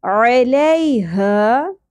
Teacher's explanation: عین وسط حلق سے ادا ہوگا باریک اواز کے ساتھ لی زبر کے بعد یا ساکن تو یہ یا لین ہے